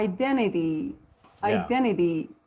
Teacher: the t is flap D